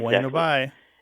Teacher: So it's bueno bye with the B barely pronounced, right?